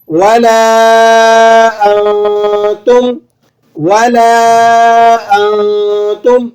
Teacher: چلیں آگے، ولا انتم، ولا انتم، لام کے بعد الف ہے، مد لگا ہوا ہے، 3 سے 4 الف لمبا کر لیں گے